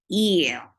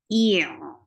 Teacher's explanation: it's not very sharply stopped, and it is not flowing very long, but it is a medium flow of sound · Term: Tawassut